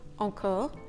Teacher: Encore includes in its first syllable the nasal en.